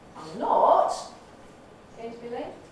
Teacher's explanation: denying somebody it goes on the negative particle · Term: nucleus